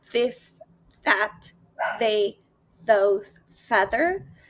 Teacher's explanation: And then we have a voiced sound, which is in this, that, they, those, feather. This sound is made by placing the tongue lightly between the teeth and vibrating the vocal cords.